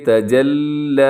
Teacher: والنہار اذا تجلی، یہاں لام باریک ہے، لام کو موٹا نہ کیجیے گا، تجلی نہیں پڑھنا ہے اس کو، بلکہ تجلی، لمبا ضرور کیجیے گا کھڑا زبر کی وجہ سے